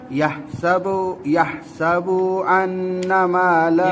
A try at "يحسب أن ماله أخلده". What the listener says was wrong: يحسب बा को लंबा नहीं करेंगे. يحسب أن ماله أخلده. ماله أخلده. इसको मद कहते हैं, ये मद है, इसको लंबा करेंगे. يحسب أن ماله أخلده.